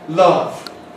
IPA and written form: lʌv (love)